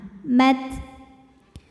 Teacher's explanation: untuk ta yang sukun, hamsnya keluar anginnya belakangan.